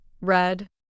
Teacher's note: your tongue curls back slightly but doesn't actually touch the roof of your mouth that's the American R common errors to avoid a common mistake